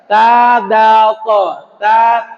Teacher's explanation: menembak ke gigi pangkal gigi seri bagian atas ta th ta ujung lidah menembak ke gigi seri bagian pangkalnya bagian atas